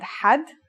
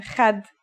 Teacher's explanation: According to phonetic charts, Ha is pronounced in a deeper part of the throat than Kha.